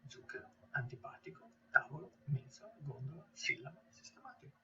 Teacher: the proparoxytone words where the stress is laying on the third last syllable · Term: proparoxyton words